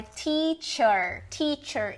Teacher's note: um R que aqui não tá transcrito como o retroflexo Mas a gente pode entender que é o r retroflexo porque é assim que é o r no inglês